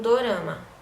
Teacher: assimilação de nasalidade em tônicas, como em dorama